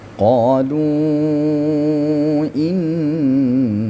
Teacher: Di sini qolu, kalimat qolu di sini ada tanda mad ya. Tanda mad ini menunjukkan bahwa dia dibaca panjang bisa dua, bisa empat, bisa 6 karena dia bertemu dengan alif. Ya, di sini wujudnya wujud alif walaupun dalam definisinya disebut dengan hamzah ya. · Tanda mad ini menunjukkan bahwa dia dibaca panjang, bisa 2, bisa 4, bisa 6, karena dia bertemu dengan alif. · Maka di sini disebut dengan mad jaiz. Kita setarakan panjangnya dibuat 4 harakat ya.